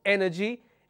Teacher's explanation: I will have the stress on the third syllable from the end which is anti penultimate